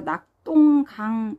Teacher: 그 다음 낙동강 보면은 이제 얘도 예외예요. 기역과 디귿, 안울림 소리와 안울림 소리가 만났어요. 경음화가 일어납니다. 된소리 대기가 일어나요.